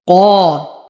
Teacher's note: أفخم القاف بأعلى درجات التفخيم فهي مفتوحة وبعدها ألف